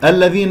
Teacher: اللام اسمية مدغمة مرققة لا تمسك